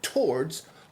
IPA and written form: ˈtɔɹdz (towards)